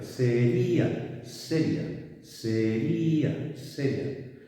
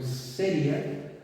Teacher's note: tenemos una vocal que es cerrada, y una vocal que es abierta. Tendríamos entonces un diptongo.